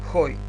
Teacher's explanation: бидејќи ој дифтонгот е напишан горе со спиритус аспер, спиритусот го читаме како Х.